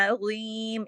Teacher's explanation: ज़ुआ को मोटा करके पूरा हक अदा करके